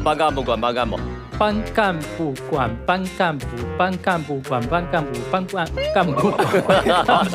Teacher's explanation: 它是我们的波泼摸双唇音和我们的这个舌根音组合在一起